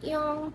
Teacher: pelafalan I terpengaruh oleh pelafalan O, sehingga bentuk bibir agak membulat mendekati bentuk bibir pada U. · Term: final sengau belakang